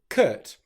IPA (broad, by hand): kət